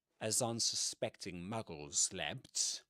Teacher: the narrator connects the first two words. He says as unanspecting a unsuspecting right as a asan as unsuspecting muggles slept muggles slept right that one long s sound in between muggles and slept.